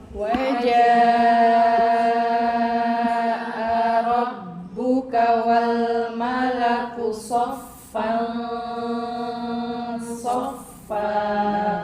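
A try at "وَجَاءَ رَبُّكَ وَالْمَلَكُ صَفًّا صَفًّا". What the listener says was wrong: Soknya mana tebalnya? Ya, so. Kemudian gunnahnya sofel so. Tebal. Ya, so sofel so.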